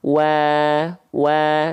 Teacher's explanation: karena wau Enggak bukan huruf tebal maka enggak dibaca wo tapi dibaca WA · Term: huruf yang tipis